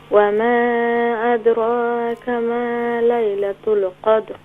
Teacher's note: قوف کو فل ماؤتھ کر کے کلیئر کریں اور دال کو پر قلقلہ کریں